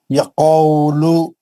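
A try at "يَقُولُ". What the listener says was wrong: नहीं, यखौलु नहीं है, देख के पढ़िए। खाफ पे पेश है, जो होंठ गोल करके पढ़ना है पेश को।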